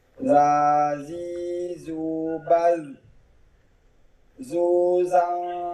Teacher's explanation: Bukan zu, itu ada desisanya zu. Ujung lisan diposisikan di ujung gigi sari atas. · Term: huruf dal